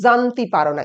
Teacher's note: যেমন জানতি পারো না, সেখানে বরেন্দ্রী উপভাষায় বলা হয় জানতি পারো না। এই যে জেড, এই উচ্চারণটা জয়ের বদলে উচ্চারিত হয়।